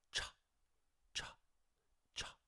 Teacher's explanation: If we don't add voice to it, it's going to sound like cha, cha, cha.